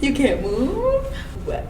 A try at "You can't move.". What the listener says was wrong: What if you said it not as a question? Almost like you can't move.